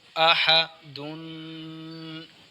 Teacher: دال 2 پیش دون، 2 پیش ہیں، تو آواز کی سطح درمیان میں ہوگی، کیونکہ پیش کی آواز کی سطح درمیان میں ہوتی ہے، جبکہ 2 پیش تنوین ہیں، تو تنوین کی آواز ناک میں جائے گی